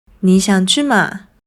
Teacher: although they do use the question particle “嗎”, it’s often pronounced at a lower pitch.